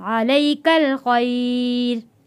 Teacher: کاف جڑے گا لام کے ساتھ